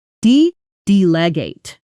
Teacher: the stress falls on the first syllable.